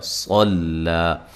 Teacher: صاد کو موٹا، لام کو باریک